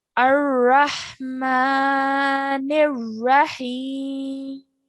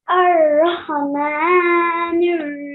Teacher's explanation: Okay, remember that this Ra also has a Fatha on it, okay? So when we join the Noon to the Ra Mushaddad, we do so with force and with pressing down on the Ra